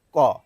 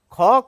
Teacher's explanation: এই মহাপ্রাণগুলি বলার সময় একটি হ ধ্বনি নির্গত হয়। হ অর্থাৎ এইচ ইংরেজিতে বললে।